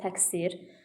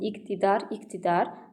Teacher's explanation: Məsələn, nümunə olaraq yaza bilərik təqsir sözünü. Q-dan sonra s-kar samitdir. Ona görə q k-ya keçir, olur təqsir.